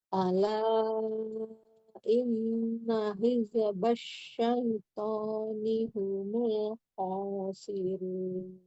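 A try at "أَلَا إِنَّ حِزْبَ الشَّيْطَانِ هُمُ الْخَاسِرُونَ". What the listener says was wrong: Huruf zai tidak mantul. Alirkan lagi. Ala inna hizbas syaitan. Bukan hizbas ya kan itu mantul.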